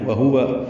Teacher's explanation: دونوں واؤ ہونٹوں کی نا تمام گلائی سے ادا کریں گے